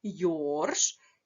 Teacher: давайте з'ясуємо Скільки букв у цьому слові в нас один склад один наголос падає на один єдиний склад на літеру о